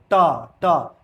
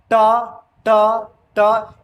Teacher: ट बोलोगे तो देखना जीव ऐसे मुड़ता है और मूर्धा से टकराता है।